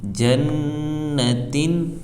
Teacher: تو رول پائے جانے کی وجہ سے ہم اس کو 1 الف کے برابر کھینچ کر ناک میں گنہ ہو کر پڑھیں گے